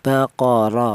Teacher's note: Di sini ada baqor, yaitu ada huruf ro di mana huruf ro ini berharakat fathah ini dibaca tebal atau dibaca tafhim